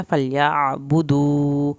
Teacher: या के साथ आइन है, आइन को हल्क से पढ़ना है। फलयाबुदू, वाव साकिन को खींचे।